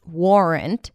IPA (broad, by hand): ˈwɔːrənt